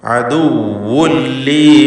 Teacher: വാവ് ശ്രദ്ധിക്കുക, 2 ചുണ്ടിൽ നിന്ന് തന്നെ വരണം, ഷദ്ദുള്ള വാവാണ്.